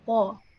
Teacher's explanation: It's at the back of the tongue. If you raise the back of the tongue up, you're gonna pronounce ta. You make it a heavy letter. If you lower it down, you're gonna pronounce ta, which is a light letter.